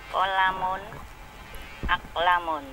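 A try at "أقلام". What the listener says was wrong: Aqlamun, lamnya panjang. Masya Allah ya, dilatih lagi Ibu ya, panjang pendeknya ya, jadi apa?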